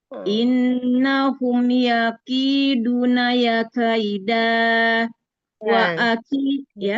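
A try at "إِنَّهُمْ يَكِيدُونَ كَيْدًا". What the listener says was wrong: Bukan kaida, nggak ada ya-nya. Nah, kaida saja. Innahum yakiduna kaida.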